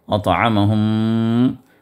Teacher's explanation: پھر اس کے بعد ہم کے اندر غنہ ہے، ادغام مع الغنہ، میم کو میم میں ملا کر وہاں پر دبا کر ادا کریں گے، 2 حرکت تک اس کو دبائے رکھیں گے. اطعمہم.